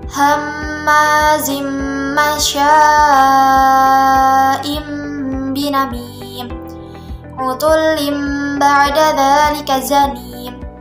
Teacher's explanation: bunyi nun mati atau tanwin dirubah menjadi bunyi mim mati dan ditahan selama 2 harokat sebelum menyebut jelas huruf ba-nya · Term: iqlab